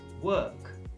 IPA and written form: wɜːk (Work)